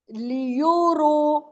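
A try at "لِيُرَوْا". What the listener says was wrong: रू नहीं है, आपने कायदे में नहीं पढ़ा रॉ व जबर। रऊ है ना, तो रू क्यों बोल रही है?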